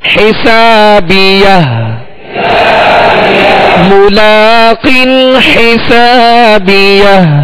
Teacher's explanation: آخر میں ہا ساکنہ ہے، ہا ساکنہ کی آواز واضح ہو